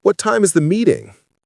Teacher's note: Voice goes down on meeting.